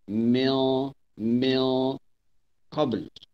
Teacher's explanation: Kita kena dengun, tapi kaedah dengunnya kita kena tebalkan gunnah, kena tafkhim. Tebal sebab qaf itu huruf isti'la. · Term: ikhfa hakiki